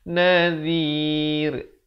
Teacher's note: dibacakan ra-nya dengan nipis. Zi di hujung lidah.